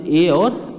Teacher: कंठ और तालव्य की सहायता से ए और ऐ बोला जाता है।